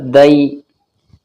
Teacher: دال یا زبر دئی، دال کہاں سے نکلتا ہے؟ زبان کی جو نوک ہے ہماری، اوپر کے جو دو دانت ہیں ان کی جڑ میں لگاؤ، دال نکل جائے گا